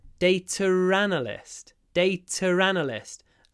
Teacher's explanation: when I say data analyst, I actually say data ranalist. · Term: linking R